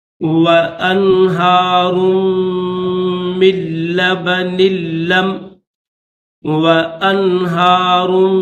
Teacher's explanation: اس را کو میم کے ساتھ ملائیں گے